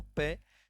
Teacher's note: जब मित्रों आप पे बोलते हैं तो आप पाएंगे स्पर्श हो रहा है कहाँ, ओष्ठ पर